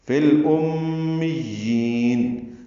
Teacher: لام ساکن پہ اظہار ہے، میم مشدد پہ غنہ ہے، میم کو یا سے ملانا ہے۔